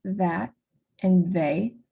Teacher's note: So for the second, v, in words like that and they, v is pronounced with vocal fold vibration, and tongue goes behind the upper and lower teeth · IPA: /ð/